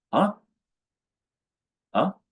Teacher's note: The last one is a neutral tone, soft and quick.